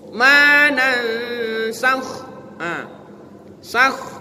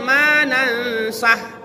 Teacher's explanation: Kho, dia itu huruf tenggorokan, tidak boleh dibaca ho. Manansakh, sakh, tidak boleh manansah. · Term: huruf kho